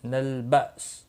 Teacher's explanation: حمزہ ساکن کو جھٹکے کے ساتھ پڑھیں گے، سین ساکن پڑھا جائے گا وقف کی صورت میں